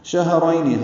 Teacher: ہا ساکن ہے، اس پہ ہمس ہے